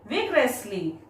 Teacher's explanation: when you pronounce the word, stress on first syllable V-I-G